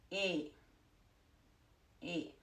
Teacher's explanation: Think about what you think about that you're going to say A, but without the second sound. So you won't say A, you will say E.